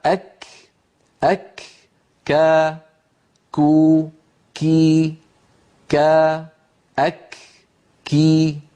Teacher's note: ومخرج الكاف من أقصى اللسان، ولكن مع الحنك اللحمي والعظمي. منطقة الحنك اللحمي والعظمي يعني أقرب من القاف.